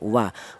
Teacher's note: huruf wawu ini keluarnya huruf berasal dari kedua bibir yang renggang ya, tidak nempel